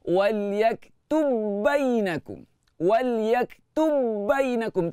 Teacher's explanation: Ba yang pertama tu terus masuk ke dalam ba. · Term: idgham mutamatsilain